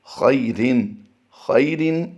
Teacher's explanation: اب یہاں پر توجہ کیجئے، خیرن، خیرن یہاں پر کوئی بھی لفظ لمبا نہیں ہوتا، جیسے ہی رن کی ادائیگی کریں گے تو غنہ کی طرف ہم چلے جائیں گے